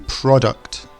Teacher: it should be product the emphasis at the start